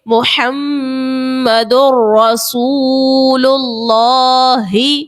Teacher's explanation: آپ پڑھو گے محمد رسول اللہ، آپ جو ہے غنہ یہاں پر نہیں کر رہے. جب آپ یہاں پر ادغام کر رہے ہو تو آپ کی آواز ناک میں نہیں جا رہی ہے